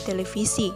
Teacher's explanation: bunyi V dalam bahasa Belanda berubah menjadi Bunyi F dalam bahasa Indonesia